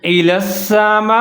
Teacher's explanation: میم کے ساتھ بڑی مد ہے، اس کو تھوڑا سا لمبا پڑھیں گے 3 سے 4 سیکنڈ تک